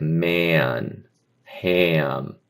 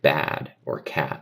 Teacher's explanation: You could hear not just one vowel sound but kind of two vowel sounds connected together like a a kad or something like that.